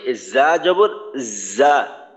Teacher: জিহ্বার আগা যেন উপরের তালুর সাথে না লাগে, জিহ্বার আগার অংশটা নিচের 2 দাঁতের আগার সঙ্গে লাগবে, ওই নিচে সামনের নিচের 2 দাঁতের মাঝ বরাবর লাগবে।